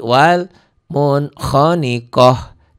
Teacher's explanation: Ta marbutah berubah menjadi ha ya bunyinya.